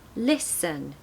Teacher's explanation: if you were to play those two notes on the piano it would be listen High then low